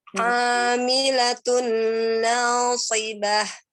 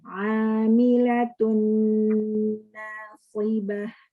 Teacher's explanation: ada gunah ya, ditahan. Lebih lama lagi nggak apa-apa.